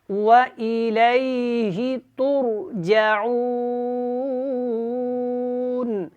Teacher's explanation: را ہے اس کو موٹا پڑھیں گے اور تا باریک ہے